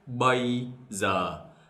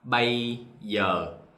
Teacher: For the GI, they pronounce like Z, as in zebra.